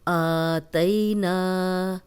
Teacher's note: حمزہ پہ کھڑی زبر آ گئی ہے، اس کو 2 حرکات لمبا کریں گے کیونکہ میں نے آپ کو پہلے بھی بتایا تھا کہ کھڑی حرکات کو بھی 2 حرکات لمبا کرتے ہیں، کھڑی زبر، کھڑی زیر، الٹا پیش۔